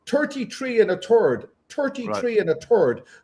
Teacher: That's why it's 33 and a 33 and a third because phonetically in the Gaelic language there's no th sound